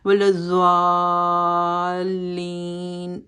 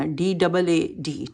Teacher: داد جو ہے اس کو سائڈ آف دا ٹنگ جو ہے وہ اوپر کے گم کے ساتھ لگ کے، تو یہ جو ہے اس کو حافت اللسان میں سے اس کا مخرج ہوتا ہے، اور یہ داد کی ساؤنڈ ہے، زاد کی ساؤنڈ نہیں ہے، اور اس کو وہی نا پاکستان میں اس کو دعاد کہتے ہیں۔